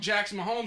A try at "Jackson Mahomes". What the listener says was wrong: It sounds like you're saying Jack's Mahomes. Yeah, like Jack's your homie. That's what it sounds like you're saying. Jack's Mahomes. Mahomes.